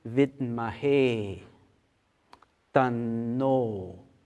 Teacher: the vowels A and the vowels O that we find in the mantra, these are always long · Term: long sounds